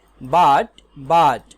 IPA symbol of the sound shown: ʌ